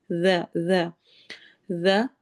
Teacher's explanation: ذال کو نرمی سے پڑھنا ہے، ز سیٹی والی آواز نہیں ہوگی